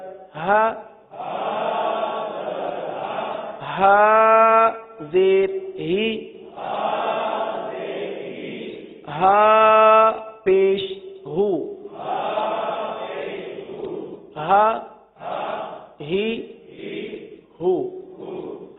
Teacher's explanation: یہ دو چشمی والا ہا ہے جو کہاں سے ادا ہوتا ہے؟ حلق کے سب سے آخر والے حصے سے